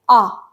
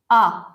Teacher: विवृत में मुंह पूर्ण रूप से खुला होता है।